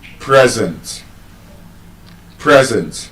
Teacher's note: As an adjective, it receives stress on the first syllable.